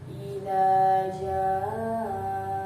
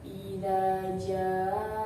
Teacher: Contoh idza jaa, di situ ada mad bi bertemu dengan hamzah dalam satu kalimat, maka cara bacanya panjang. Panjangnya 3 alif atau 6 harakat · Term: mad wajib mutasil